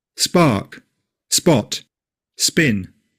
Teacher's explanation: The candle doesn't move. So the P in these words is unaspirated.